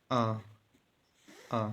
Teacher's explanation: देखिए छोटे आ आ में समान स्तर पर रह रही है मध्य स्तर पर ना ऊपर पीछे से जा रही है ना आगे से एकदम समान स्तर पर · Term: मध्य स्वर